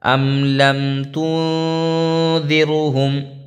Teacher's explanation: اظہار شفوی سے مطلب مراد یہ ہے کہ میم کو ظاہر کر کے پڑھیں گے، جیسے اردو میں ہم اور تم کی میم کو پڑھتے ہیں، تو یہاں پہ بھی کوئی غنہ اخفا نہیں ہونا ہے